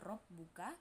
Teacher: karena ra berharakat fathah. Cara bacanya ditebalkan.